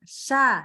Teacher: Jadi ini shin-nya agak ketebelan. Hati-hati ya. Dia memang menyebar di mulut, tapi jangan sampai dia jadi pangkal lidahnya naik.